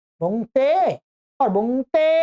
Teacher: तो ये स्वरित पहले उदात्त था, तो फिर इसी सूत्र से यहाँ पर इसको स्वरित और प्लुत हो गया, ठीक है, त्रिमात्रिक हो गया। तो पहले ए था, द्विमात्रिक था, अब वो प्लुत हो गया, त्रिमात्रिक हो गया। बस उच्चारण में थोड़ा सा डिफरेंस हो जाएगा, भेद हो जाएगा, लंबा हो जाएगा उच्चारण।